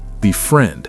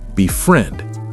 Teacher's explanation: It's stressed on friend